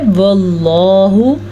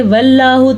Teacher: لفظ اللہ کو ہم نے پھر سے پر پڑھا ہے کیونکہ لفظ اللہ سے پہلے زبر ہے۔